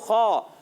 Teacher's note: خا حلق کے اوپر والے حصے سے ادا ہوتا ہے، اور پیارے بچوں خا، بعض بچے خا کو کھا پڑھ دیتے، کھا بھی نہیں پڑھنا، خا کو ہا سے بھی نہیں بدلنا، بعض جگہوں پہ ہا سے ہی بدلا جاتا ہے۔